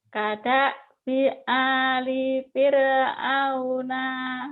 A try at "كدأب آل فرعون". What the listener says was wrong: Pendek. Nanya pendek. Jangan panjang ya.